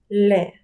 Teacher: у французькій мові звук л напівтвердий. Ні твердий, ні м'який. Напівтвердий, напівм'який.